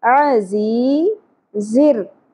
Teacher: عین زبر ہوگا، ایک حرکت کے برابر ہی کھینچنا ہے، زیادہ نہیں کھینچیں گے. زی، زیر کے ساتھ یا ساکن حرف مدہ ایک الف کے برابر کھینچنا ہے